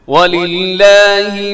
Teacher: لفظ اللہ کے لام سے پہلے جو لام ہے للہ جو آتا ہے لام، وہ اس کے نیچے کسرہ ہے، زیر ہے تو اس لیے باریک ہوگا